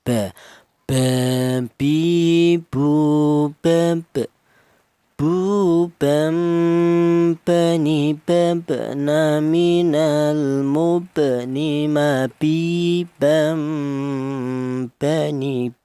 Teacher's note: Huruf ba ini keluarnya huruf berasal dari kedua bibir yang rapat